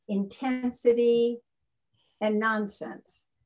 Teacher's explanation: rhyming the stressed syllable of one word with the unstressed syllable of another. And by stress, I simply mean when you look in the dictionary, you know, the little accent mark over a certain syllable. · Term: light rhyme